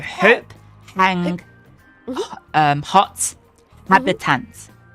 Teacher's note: So the H in Latin is always sounded. There's no such thing as a silent H in Latin.